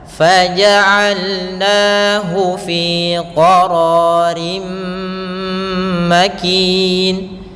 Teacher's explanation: ro-nya tebal, isti'la sama, yaitu huruf yang terangkat pangkal lidah kita